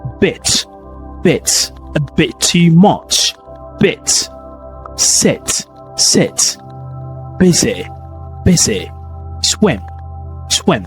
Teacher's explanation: it's a very short, more relaxed version of E, as we mentioned earlier, and it's still high, and also your mouth is in a high position but not intense, okay? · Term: kit vowel